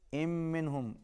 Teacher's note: آواز ناک میں جائے گی، تشدید ہے میم کے اوپر، اور نون ساکن کے بعد ہا حروف اظہار میں سے ہے، یہاں پر اظہار ہوگا۔